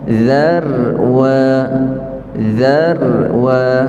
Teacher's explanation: Za itu nipis ra itu kita tebalkan